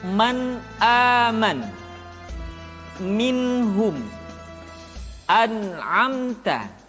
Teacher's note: ketika bertemu dengan huruf a ha a k dan G caranya nun mati atau tanwin dibaca secara jelas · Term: izhar